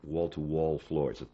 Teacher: It's very hard to get your tongue from an L shape to an F shape that fast. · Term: LF problem